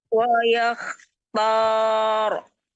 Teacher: Wa matikan rohnya dan tebalkan.